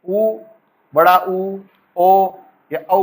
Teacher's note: उ, बड़ा उ, ओ या औ बोलिए, आपके होठ जो है गोलाकार हो जाएंगे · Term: वृत्ताकार